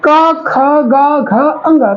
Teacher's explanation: जीभ क्या कर रही है, पीछे को जो तालु होता है सबसे लास्ट में ये गले के पास, उसको यहाँ पर ओपन क्लोज करती है। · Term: का वर्ग